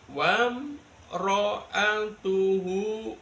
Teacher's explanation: Idhar itu jelas, syafawi di bibir. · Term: idhar syafawi